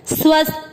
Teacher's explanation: बोलते हैं त नहीं थ बोलना है, स्वस्थ, थ में अ की मात्रा विसर्ग को पढ़ेंगे ह, स्वस्थ।